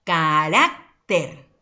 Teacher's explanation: Mayor fuerza de voz, penúltima sílaba. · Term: sílaba tónica